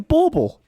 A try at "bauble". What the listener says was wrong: You're putting some R's in there.